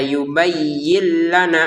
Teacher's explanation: Yin di sini nun sukun, ternyata di depan ada lam, masukin nun sukunnya ke lam ya. Yubayyin menjadi yubayyin lana. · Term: Tanpa dengungan